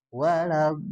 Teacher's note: Nah, itu tuh mad lazim ya. Mad lazim dibacanya enam harakat ya.